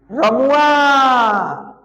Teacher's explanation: पुलु स्वर में तीन मात्राओं का प्रयोग किया जाता है